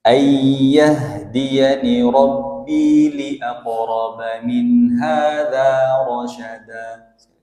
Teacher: Pada kalimat Rabbi jangan terlalu panjang. Ayyahdiyani Rabbi li'aqrab, gitu aja, 2 harokat.